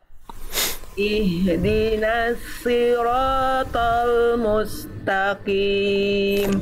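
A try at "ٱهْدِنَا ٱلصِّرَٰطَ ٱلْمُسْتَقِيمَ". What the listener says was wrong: Ihdinasli itu huruf apa? Huruf shad. Nah, yang Bunda lafalkan tadi belum menjadi huruf shad. Jadi itu huruf shad Bunda.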